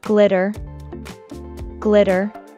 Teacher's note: the Double T in the word is pronounced as the fast D sound as they are between two vowels i and e